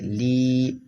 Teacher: یہ یا حرف مدہ ہے اس لیے کھینچے گا